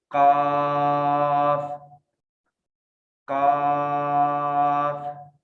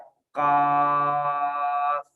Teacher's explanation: میری زبان کی جو جڑ ہے وہ اپنے بالکل سامنے, جس کو ہم نے کہا لحات اور نرم تالو, اس لحات کوے اور نرم تالو کے درمیان میں ٹچ ہو رہی ہے